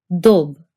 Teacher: This is a d made with your tongue touching your front teeth.